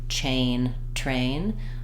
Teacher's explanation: the CH sound is further back